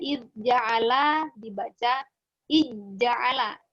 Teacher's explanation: Jadi huruf dalnya ini yang sukun tidak dibaca, tidak terdengar lagi lah begitu, yang langsung dimasukkan kepada huruf ja. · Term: idgham shaghir